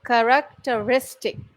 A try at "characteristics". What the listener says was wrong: Lovely. Don't forget the s on the end. Characteristics.